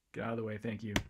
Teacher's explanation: her l's are at the lingual labial place of articulation i guess you would say but they're still lateral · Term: lingo labial